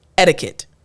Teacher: Sounds a little bit different, right? So it kind of rolls off of our tongue and the T kind of sounds like a D.